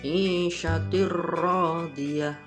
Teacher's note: maka cara membacanya suara tanwin harus dimasukkan ke huruf ra tanpa disertai dengan dengung. Isyatir radiyah. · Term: idgham bilahunna